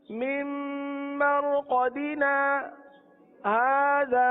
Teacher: सिर्फ आवाज रुकती है और सांस जारी रहता है। सही ना, सांस नहीं रुकता, बस इतना सा फर्क है। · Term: سکتا